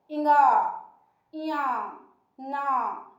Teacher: जब हम इन वर्णों का उच्चारण करते हैं तो वायु जो है मुंह के माध्यम से ना निकलकर हमारे नाक के माध्यम से बाहर निकलती है। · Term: नासिक्य व्यंजन